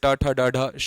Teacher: मूर्धा से ट ठ ड ढ शा निकलता है